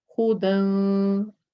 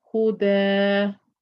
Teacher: The lengthening of the letter is dropped when you continue reading, but if you do stop, you will lengthen it for 2 counts. So if I read this letter, the first word, I will pronounce the end letter as, if I'm continuing, hudan, and then I will make apply my Noon Sakin rules and continue reading.